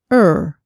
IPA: ɚ